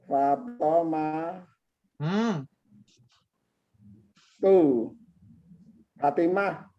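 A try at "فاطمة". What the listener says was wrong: Iya, coba diulang. Iya, Fatimatu. Fa-nya panjang. Fa-nya panjang. Fatimatu. bentar, terakhirnya jangan di tanwin ya, Fatimah itu Fatimatu.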